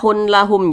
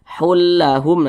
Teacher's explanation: Cara membacanya itu dengan cara memasukkan kemudian tidak disertai dengan gunnah, tidak disertai dengan dengungan. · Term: idgham bila gunnah